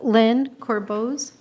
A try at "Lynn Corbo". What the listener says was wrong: It's Lynn Corbo, Z is silent.